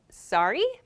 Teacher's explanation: When I have a question though, I say, sorry, my intonation goes up. So we use this, sorry, when we didn't hear something another person said, or when we don't understand that thing that they just said.